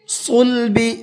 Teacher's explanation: صاد کو منہ بھر کے پڑھنا ہے. والترائب یہاں بھی یہ بڑا مد بنا ہوا ہے اس لیے اس کو بھی تھوڑا سا زیادہ کھینچ کر کے پڑھنا ہے.